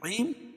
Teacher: رحیم یا مد عارض وقفی ہوگا، اس میں طول، توسط، قصر تینوں جائز ہے۔ 2 الف، 1 الف اور 5 الف تک اس کو کھینچ کے پڑھ سکتے ہیں۔